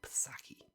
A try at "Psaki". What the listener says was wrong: it, Psaki or is it Saki? It's Saki. The P is silent.